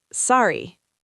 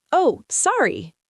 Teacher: The second one sounds genuine, >> right? Because I added vocal inflection. My voice went up a bit and I smiled.